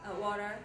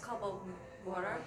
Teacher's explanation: If there's a T in the middle of a word, it gets softer. It sounds like a D.